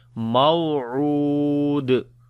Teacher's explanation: On the dal we make qalqala when we stop